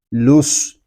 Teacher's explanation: یہاں واو الف اور الف لام جو ہے یہ نہیں پڑھے جا رہے، ہم لام کو صاد کے ساتھ ملا کر پڑھیں گے۔